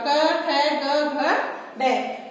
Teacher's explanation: मतलब इन व्यंजनों का उच्चारण हम कहाँ से करते हैं, हमारे कंठ के द्वारा